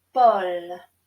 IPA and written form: pɔl (Paul)